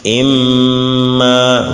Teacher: On fait le ghunna pendant 2 mouvements qui est environ 1 seconde.